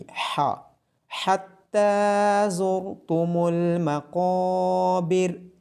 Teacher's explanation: حا کی آواز گلے کے درمیان والے حصے سے آئے گی۔